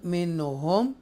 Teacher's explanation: After नून साकिना हरूफ हल्क या throat letter में से हा है, डीपली हा, तो लिहाजा ये इजहार होगा यहाँ पर, और ये भी इजहार शफवी होगा।